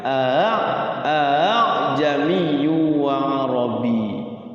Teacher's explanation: tashil sudah saya pernah sampaikan tashhil itu tulisannya A jamiyun tapi cara bacanya itu Hamzah yang kedua itu diringankan